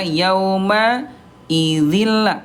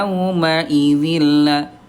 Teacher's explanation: idgam bila guna, idgam artinya melebur bila gunah tanpa gunah, tanpa dengung ya. Ini dilebur doang nih, ya.